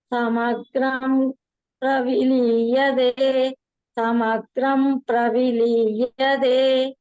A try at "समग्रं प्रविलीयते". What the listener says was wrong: Bagini liyade no liyate.